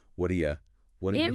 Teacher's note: The vowel in do gets weak and the yi sound from u links onto that sound.